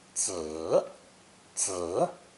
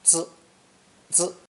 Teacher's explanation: The next character in today's lesson is the newborn infant, drawn swaddled in cloth with arms raised. Pronounced third tone, 子, 子, and sometimes neutral tone, 子, 子.